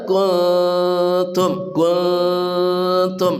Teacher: Dibaca dengan samar dan mendengung. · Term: ikhfa